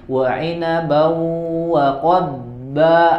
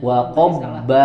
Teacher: Contoh misalkan tadi wa inabau wa qadba, ada huruf dod dengan huruf ba. Itu beda makhraj. ya maka harus dibaca idhar, jelas dodnya jelas, ba-nya jelas, ya. Berarti yang kalau dibaca mbaknya Wa qobba salah.